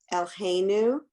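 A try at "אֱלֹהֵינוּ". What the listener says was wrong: What's the vowel in the lamed?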